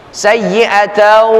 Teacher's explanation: Gunnah itu keluar dari khayshum. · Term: idgham bi ghunnah